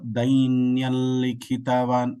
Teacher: when there is an anuswara and a lakara there is one more lakara with anunasika which comes in between